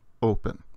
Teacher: there's a tiny little burst of breath when we start the O sound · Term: smooth breathing